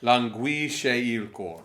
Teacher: the last syllable of languisce and il are on the same note, so you have to kind of put them together on this note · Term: diphthong